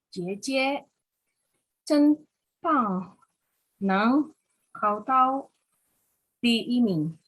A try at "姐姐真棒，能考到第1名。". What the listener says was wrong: Ibu pas baca yang modul itu nadanya lumayan, Ibu. Karena kebantu dengan tanda nada ya.